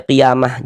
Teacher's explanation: Qiamah ini kalau kita berwakaf atau berhenti di sini kita baca qiyamah. Jangan baca kiamat ya. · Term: huruf ta marbutah